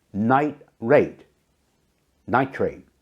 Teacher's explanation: The T at the end of night joins smoothly with the R in rate. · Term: linking